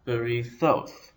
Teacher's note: The stress is on the last syllable, as in most Hebrew words, berithoth. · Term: the tonic